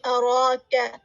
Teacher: نون کا مشدد آپ ادا کریں گے. اراک، را کے ساتھ کھڑی زبر ہے تو اس کو 2 کاؤنٹ اسٹریچ کریں گے